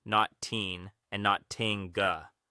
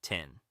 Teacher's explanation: Touch the tip of your tongue to the ridge just behind your upper teeth for the T. Relax into a short I sound like in sit, and end on a clean N. It should feel light and bouncy, tin.